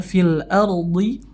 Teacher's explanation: ada Ro sebelumnya berharakat fathah hurufnya fil ARD maka rnya dibaca tebal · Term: ra-nya dibaca tebal